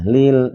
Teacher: ada lam sukun sebelumnya ada huruf yang berharokat kasroh dibacanya tipis namanya tarkik muttaqin.